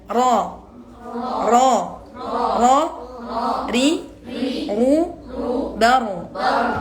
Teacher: Menebalkan ro ya tidak dengan rahang tapi dengan pangkal lidah.